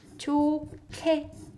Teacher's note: hiet and kyuk combines produces k sound.